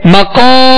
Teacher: ہونٹوں کو گول نہیں کریں گے، قاف کو ادا کرتے ہوئے اس کے ساتھ حرف مد ہے، الف مدہ ہے، ایک الف کے برابر کھینچیں گے، قاف کو پر پڑھیں گے، حروف مستعلیہ میں سے ہے.